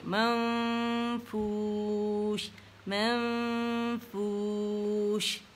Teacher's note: نون height کریں گے, منف نہیں پڑھیں گے